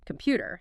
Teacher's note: that first vowel gets reduced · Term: vowel reduction